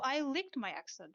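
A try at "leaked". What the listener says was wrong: Licked? Ah, leak. Sorry, leak and lick are two different words, and my brain was like, help?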